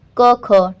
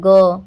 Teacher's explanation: क ख टाइम नहीं लगा ग टाइम लगा ना और कंपन भी हुआ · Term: सघोष